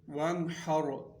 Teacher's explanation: ہا کی وجہ سے یہاں پر غنہ نہیں کریں گے بلکہ اس کو ظاہر کر کے پڑھیں گے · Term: اظہار